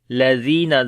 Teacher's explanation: زال کو نرم پڑھیں گے، لمبا بھی کریں گے، یا مدہ ہے یہاں پر